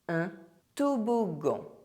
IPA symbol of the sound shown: g